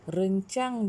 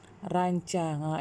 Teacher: vokal ni yang membezakan dia, sama ada dia E pepet ataupun dia huruf A